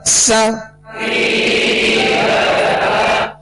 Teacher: सीन को सख्ती से पढ़ना है, सीटी की आवाज इसमें पैदा होगी और बारीक पढ़ना है